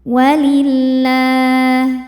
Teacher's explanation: lam berharakat fathah panjang cara bacanya dipanjangkan dua harakat berikutnya ada ada hukum alif lam qamariah ya karena alif lam · lam jalalah dibunyikan secara tarqik sebab sebelumnya berharakat kasrah cara bacanya ditipiskan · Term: Mad thii, tarqiq